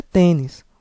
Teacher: Ou seja a sílaba mais forte é a penúltima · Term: paroxítona